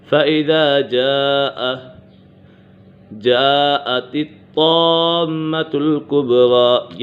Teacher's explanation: تو کے اوپر کلکلا ہو رہا ہے اور یہ تو مشدد بھی ہے